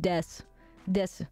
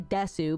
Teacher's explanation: Des sometimes I can't help it Desu is just Des Des you can't hear the U like it's it's like nasal sound this like it's so tiny